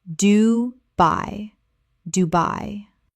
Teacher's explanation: Two syllables with the stress clearly on the second.